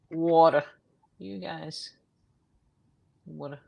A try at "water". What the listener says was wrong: No, I don't say water. I say water. There's no R. There's no second R. I say it fast, but there's no second R.